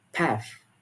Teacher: The next vowel differences that I would like to explain is the trap bath split. So, in general American English, it uses a short a vowel in words like path.